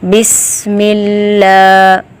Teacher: سین میں سیٹی کی آواز پیدا ہونی چاہیے۔ بسم اللہ، لام کے اوپر کھڑی زبر ہے، الف مدہ کی طرح اس کو لمبا کریں گے۔